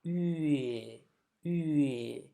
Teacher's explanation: these two sounds, u and e, have to merge together